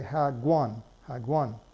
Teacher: What's happening here is that the K at the end of the first syllable is being pushed into the second syllable if there's not already a consonant there. Moreover, the K is pronounced like a G sound, so we say hagwan, hagwan, right?